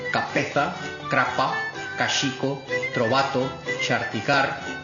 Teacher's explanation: Pervivencia generalizada de oclusivas sordas intervocálicas